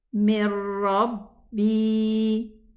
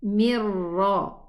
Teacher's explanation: And that's why you find a shadda on top of the ra, meaning that this is a total idgham because there's no ghunna and there's no sound of the noon whatsoever. We jump in our pronunciation from the mim kasra to the ra, mirra. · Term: idgham kamil